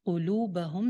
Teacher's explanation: لام ایک الف لمبا ہوگا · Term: واو مدہ